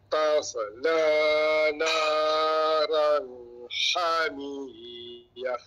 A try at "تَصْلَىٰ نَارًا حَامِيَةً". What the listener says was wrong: Panjang sikit kat ha tu. Naran hamiyah.